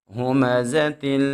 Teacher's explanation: ہا کو خوب موٹا پڑھیں گے اور زا میں سیٹی پیدا کریں گے